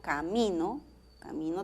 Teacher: camino tiene acento en la segunda sílaba camí no verdad duplex tiene acento en la primera sílaba honestidad